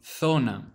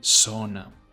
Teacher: The pronunciation of the letter Z in Spanish will vary per country, but as a rule of thumb, in Spain, it will make a th sound, so the word itself will be zona, whereas in Latin America it will be an S sound, so it will be zona.